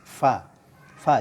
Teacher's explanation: keluar dari bagian dalam perut bibir bawah dengan dua gigi seri atas Va Va jangan ditiup ya gigi seri atas dengan dua gigi